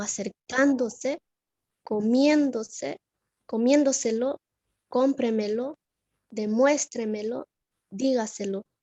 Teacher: Y la tilde sobre esdrújula son aquellas que llevan la sílaba tónica en la cuarta sílaba, contando también de derecha a izquierda